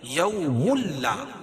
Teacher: یہ ادغام کریں گے لیکن غنہ نہیں کریں گے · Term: ادغام بلا غنہ